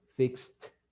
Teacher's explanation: No tengo vibración, entonces lo pronuncio como una T.